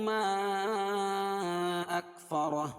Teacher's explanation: حروف مدہ کے بعد حمزہ دوسرے کلمے میں ہو تو مد منفصل ہوتا ہے، اور اس کو 2 سے 2.5 الف کے برابر کھینچ کے پڑھیں گے. اکفرہ را پر ہوگی، اور یہاں وقف کی حالت میں الٹا پیش جو ہے جزم سے بدل جائے گی، ہائے ساکنہ سے بدل جائے گی.